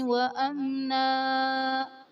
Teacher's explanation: وَأَمْنَا میں میم ساکن کے بعد حرف با اور میم کے علاوہ نون آ رہا ہے، تو یہاں پر اظہار شفوی کا قاعدہ ہوگا، یعنی میم ساکن میں ہم غنہ نہیں کریں گے